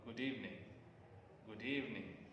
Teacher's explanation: fine okay and the rising falling tone this stone consists of rise to high pitch and then fall